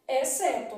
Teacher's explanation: Na palavra exceto, o X não é pronunciado. Então, na palavra exceto, X, C, estão formando aqui dígrafo.